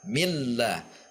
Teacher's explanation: Harus ada tekanan pada lam, mil. Ini juga tidak boleh diayun, tidak mil.